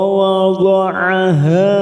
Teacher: ha fathah diikuti alif 2 harokat